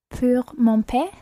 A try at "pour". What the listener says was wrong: Okay, mon père, that was right. Just watch pour. Not pure, okay? Pour mon père.